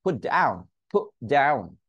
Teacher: অর্থাৎ টি উচ্চারণ করা থেকে আটকে দিয়েছি।